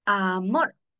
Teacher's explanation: La sílaba tónica es mor